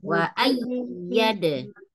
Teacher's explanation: ditekan ya, tapi nggak dipanjangkan, hanya ditekan.